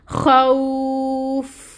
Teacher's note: خو خو. آگے فا ہے، فا کو ساکن کریں کیونکہ آگے آیا مکمل ہو رہی ہے اور فا کی ہمس لے کے آئیں